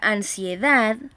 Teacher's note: la palabra ansiedad, que también recibe su sílaba tónica en la última sílaba, también se acentúa prosódicamente en este caso, porque termina en D.